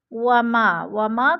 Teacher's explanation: وما کو تھوڑا سا ہم نے کھینچنا ہے، الف مدہ ہے، الف خالی سے پہلے میم کے اوپر زبر ہے تو الف مدہ کو ایک الف دو حرکات کے برابر کھینچ کر پڑھنا ہے